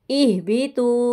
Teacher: حمزہ کو ہا کے ساتھ کر کے آواز آئے گی بھاری